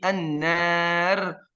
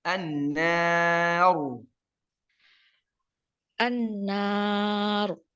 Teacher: Jadi alif, lam, nun, alif semuanya tipis, ra-nya saja yang tebal. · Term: ra yang tebal